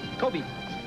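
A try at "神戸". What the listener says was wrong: It is not pronounced Kobe. It is pronounced Kobe. The E is pronounced A.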